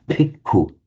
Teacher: The Thais find it impossible to say bhikkhu. If you hear a Thai pronounce it, you'll say bhikkhu with a p. It's because of the phonetics of Thai, they can't do a b sound.